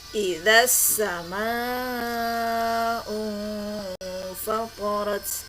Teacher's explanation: alif lamnya tidak terdengar dengan jelas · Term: alif lam syamsiyah